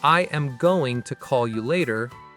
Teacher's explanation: But, if someone says, "I am going to call you later." Every word fully pronounced, full weight on each. It sounds a bit robotic.